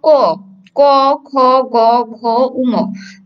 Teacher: দেখবে তোমরা কণ্ঠ ধ্বনি বা জিহ্বার মূলের সাথে এই 5টা বর্ণ লেগে উচ্চারিত হচ্ছে